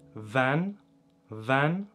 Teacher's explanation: Für Ort oder Land sagt man auf Gegisch Van, Van mit nasalem Ä